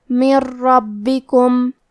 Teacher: کلمت ربکم را حروف الادغام بغیر غنہ میں سے ہے اور ادغام کا معنی ہے حرف کو حرف میں داخل کرنا. تو ہم نون ساکن کو را میں ملا کے بغیر غنہ سے لیکن تشدید کے ساتھ یہ حکم کو ادا کریں گے